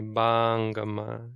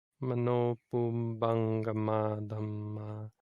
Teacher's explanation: You can't say bangama. It's not the long A. Even though it's a long syllable. You don't lengthen the vowel. You just take a pause after it.